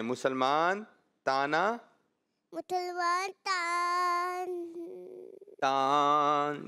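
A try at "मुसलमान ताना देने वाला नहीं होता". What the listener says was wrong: इतना लंबा कर दिया आपने।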